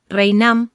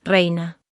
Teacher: tenemos un fenómeno fonético de apócope en la m final. Esta desaparece y nos queda la palabra reina.